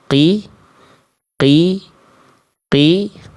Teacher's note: tempat keluar dari huruf qof itu dari pangkal lidah disentuhkan ke bagian langit-langit yang lunak saja